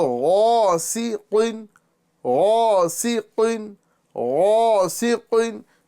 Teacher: سین کی جگہ پر کیا ہوا؟ زبان کی جڑ نیچے آ گئی. اور غین اور قوف کے اندر زبان کی جڑ کیا ہوا؟ اوپر چلی گئی